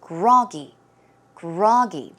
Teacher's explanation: the stress goes on the first syllable